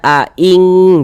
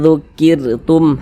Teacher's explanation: kita dengungkan jadi suaranya itu kita tahan kita panjangkan sepanjang dua harakat